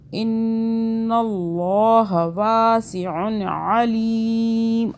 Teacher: اللہ موٹا ہو رہا ہے کیونکہ اللہ سے پہلے زبر آ رہا ہے نون کے اوپر، دیکھ لیں. ٹھیک ہے، اللہ سے پہلے زبر آئے پیش آئے اللہ موٹا ہو جاتا ہے، اللہ کو موٹا پڑھتے ہیں.